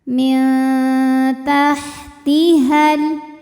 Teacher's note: panjang dua harakat tajri Min Lalu ada hukum ikhfa aqrab karena nun sukun menghadapi huruf Ta Maka nunnya dibunyikan samar-samar menuju ta disertai bunyi dengungan